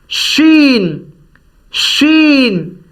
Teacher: ویسے زبان کا جو بیچ ہے، زبان جیسے میں آپ کے سامنے یہ بناؤں تو زبان کا بیچ اوپر کے تالو سے لگے گا تب یہ نکلے گی